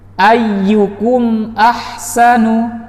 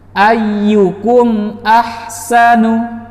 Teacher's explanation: kita lihat mim sakinahnya kita baca jelas tanpa ditahan. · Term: izhar syafawi